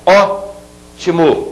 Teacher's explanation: ótimo eu tenho a última a penúltima e a anti penúltima a anti penúltima é a que é mais forte portanto se trata de uma palavra proparoxítona